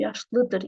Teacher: Yenə xəbərlik şəkilçisi vurğu qəbul etmədiyi üçün yenə də bir əvvələ düşür. Demək vurğu dəyişməyəcək.